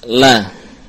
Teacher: Jahr yakni lam keluar tanpa dilafadkan tanpa ada aliran nafas.